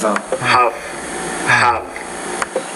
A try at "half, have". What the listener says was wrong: And make that second word longer. Half, have.